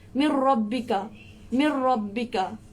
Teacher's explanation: Jadi huruf nun tu tak dengar sangat, tapi dia terus masuk ke dalam huruf ra. Huruf nun tak dengar sangat, huruf nun tu tak disebutkan sangat, kemudian terus masuk ke dalam huruf ra.